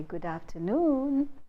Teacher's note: So the pitch change takes place on the primary stress, which is on noon.